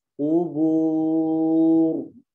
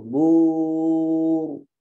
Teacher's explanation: Jangan ditarik karena dia setelahnya ada dhammah ya, setelah qa-nya ada dhammah, ba-nya dhammah, ada waw juga yang harus maju bibirnya, ro-nya juga tebal